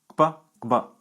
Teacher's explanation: Some other interesting consonants in Yoruba are velar labial stops, kp and kb. They have a double articulation at the lips and at the back of the roof of the mouth.